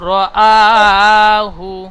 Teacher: হামজা একেবারে পরিষ্কার উচ্চারণ করবেন একালিফ টান দিয়ে